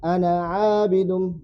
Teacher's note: Kalau kita baca sambung, ana abidun, batal alif.